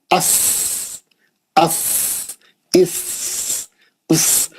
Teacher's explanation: अस अस इस उस, बारीक सीटी, दोनों दांतों को बंद करके उसके पीछे जबान की नोक ला के लगा के निकालना। · सीन में कोई आवाज नहीं है। सीन पढ़ते हुए आवाज नहीं आती।